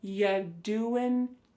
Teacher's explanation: The word you is reduced to y.